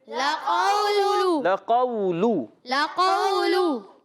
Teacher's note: واو لین ہوگا، نرمی سے ادا کریں گے، اور قاف کو موٹا رکھنا ہے،